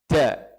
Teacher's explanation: Sandarannya dal itu kuat. Nggak boleh keluar angin, agak dimundurkan sedikit ininya, jangan sampai menyentuh gigi.